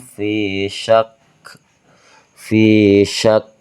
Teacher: Jadi, kita keluarkan angin fi syak karena ini huruf huruf hams · Nah, syak ini termasuk huruf hams, Teman-teman, ya, yang harus mengeluarkan angin.